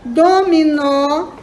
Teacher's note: é uma oxítona porque a última é a mais forte